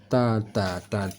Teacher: cara membaca Ta ini ta dua titik yaitu t-anya tidak tebal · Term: ta tipis